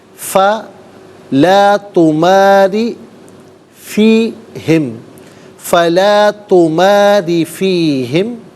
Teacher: را کے نیچے زیر ہے، را کو باریک کر کے پڑھا جائے گا